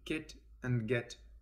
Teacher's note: the back of the tongue touches the soft palate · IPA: [k], [g]